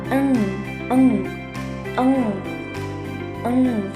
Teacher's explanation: dihasilkan oleh pangkal lidah dorsum ini yang menempel pada langit pada langit-langit lunak bawah sehingga aliran udara tertahan dan keluar melalui hidung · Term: dorsovelar nasal